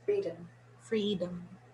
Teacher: the o in freedom is a schwa